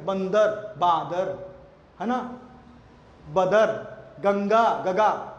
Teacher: अनुस्वार को ही गायब कर दिया गया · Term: अनुस्वार संबंधी दोष